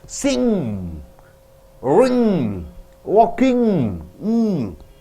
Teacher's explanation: When you want to say ng you have to close your lips and the ng should come through your nose · So NG is back in the throat with G. The back of the tongue presses back, and again the air comes out through the nose.